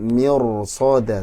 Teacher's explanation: karena ada huruf isti'la so, maka ro-nya jadi tebal, mirsoda, tapi so-nya harus satu kata.